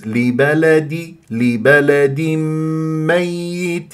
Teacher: تنوين كسر جاء بعدها ميم ادغام بغنه